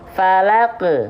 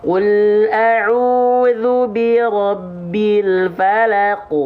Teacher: pangkal lidahnya diangkat biar makin tebal huruf qafnya. Nama sifatnya isti'ala.